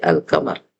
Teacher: حروف قمری آنے کی صورت میں جس طرح چاند کو ہم بڑے واضح اور کلیئرٹی کے ساتھ دیکھ سکتے ہیں، اسی طرح ہم ان شروع میں الف لام کو ہم ظاہر کر کے پڑھتے ہیں، اظہار ہوتا ہے، لام پر جزم ہوتا ہے